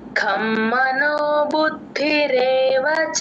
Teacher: ఖ ఇది మహాప్రాణం పెట్టి చెప్పాలి యూజువల్ గా కమ్ అనేస్తారు